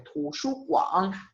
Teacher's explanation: Por ejemplo, la palabra biblioteca, tu, shu, guan, son 3 sílabas, y la última tiene tercer tono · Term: tercer tono completo